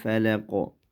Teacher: Birob alfalaq degandik alif lam bu yerda izhar qamar bo'li uchun lamni ochiq o'qiymiz. Oxiridagi qafni qalqala qilib to'xtaymiz.